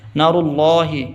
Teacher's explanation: اللہ سے پہلے پیش ہے، آواز موٹی ہوگی